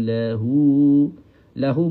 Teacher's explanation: Lahu kena baca dengan dua harakat. Hukum dia adalah mad silah.